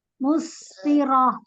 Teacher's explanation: tak marbuto ketika sukun menjadi huruf H